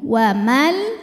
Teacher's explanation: nun sukun menghadapi huruf lam maka Nun dileburkan ke lam tidak disertai dengung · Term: idgham bilaghunah